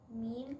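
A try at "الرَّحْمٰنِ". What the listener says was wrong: You forgot your alif saghira. Put your alif saghira on there. Put your alif saghira there.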